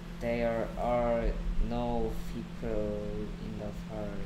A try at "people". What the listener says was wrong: There are no 왜 P 발음을 아. F처럼 내냐? People이냐? People in the park.